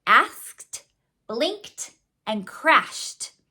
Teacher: if the sound before the ED is unvoiced, the ED is actually going to represent the T sound. So that's true in words like asked, blinked, and crashed.